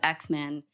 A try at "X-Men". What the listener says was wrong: X is silent. The X is silent.